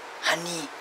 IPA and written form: ˈhʌni (Honey)